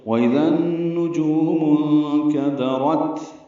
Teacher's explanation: اخفا ہوگا نون ساکن کے بعد کاف آنے کی وجہ سے۔ کاف دال باریک ہے، را پر ہے اور تا ساکن پہ ہمس ہے۔